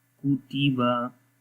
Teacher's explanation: کاف زبر کا، تا زبر تا، کا تا، با زبر با، काताबा, काताबा, बारीक पढ़ेंगे तीनों हुरूफ, मोटा नहीं पढ़ेंगे और लंबा भी नहीं करेंगे